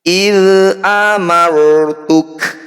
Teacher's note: Disebut bacaan yaitu ro tafkhim. Jadi tafkhim itu artinya tebal. Bunyi ro ini kita harus kurangi getarannya.